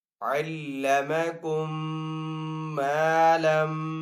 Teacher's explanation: میم کے اوپر یہاں پہ تشدید ہے، میم مشدد ہے، تو یہاں پہ غنہ کر کے پڑھیں گے